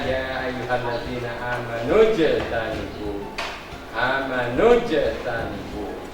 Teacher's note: ada jim sukun ya. Maka dibacanya harus mantul.